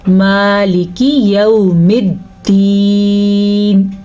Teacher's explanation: اکثر لوگ اس کو پڑھتے ہیں مالک، کاف کو لمبا کر دیتے ہیں اور مجہولانہ سٹائل میں پڑھتے ہیں. ہم نے پڑھنا ہے مالکی، کاف کو لمبا نہیں کرنا